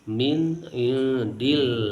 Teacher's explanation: Allah, lafzul jalalah. Hukumnya adalah tarkik, dibaca tipis, karena sebelumnya ada huruf yang harkatnya kasroh.